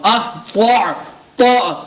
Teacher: So ta is haruf musta'liya, we need to read it with a full mouth.